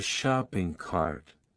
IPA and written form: ˈʃɑːpɪŋ kɑrt (shopping cart)